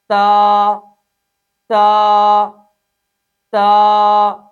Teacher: इस हर्फ में एक अलिफ के बराबर मदे असली करेंगे।